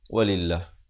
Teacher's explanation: Walillah dibacakan nipis 2 harakat.